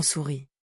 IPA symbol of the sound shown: u